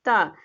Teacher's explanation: आप जैसे ता बोलते हो तो आपकी जो जीवा होती है वो जाके दांत में स्पर्श होती है